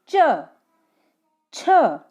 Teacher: अपनी जो जीभ है वो अपने जो सॉफ्ट पैलेट होता है ना मुंह का ऊपरी भाग, ऊपरी हिस्सा, वहां पर टच होती है। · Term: तालव्य